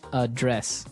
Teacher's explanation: So, the verb address has the the stress on the second syllable